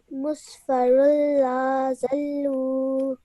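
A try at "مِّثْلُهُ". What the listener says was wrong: But make sure not to stretch the lam out for too long because it's a simple fatha on it.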